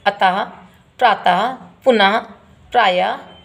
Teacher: अक्षर के अंत में लगने वाले 2 बिंदुओं को विसर्ग कहते हैं। इनका उच्चारण हल्के से हा शब्द की भांति होता है